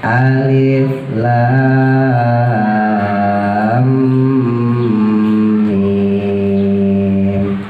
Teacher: lamnya yang panjang, omnya ditahan karena guna. Alif lam, masukin dulu sebelum ke mim ya, omnya ditahan.